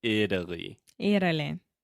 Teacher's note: And then you're making the flap T. So you're not saying it-ally, you're saying Italy.